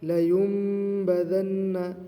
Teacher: کلا لینبذن، نون ساکن ہے، نون ساکن کے بعد با آیا ہے، لہٰذا نون کو میم سے بدل کر پڑھیں گے غنہ کے ساتھ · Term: اقلاب